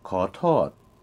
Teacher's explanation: excuse me is ka tot, rising, then falling.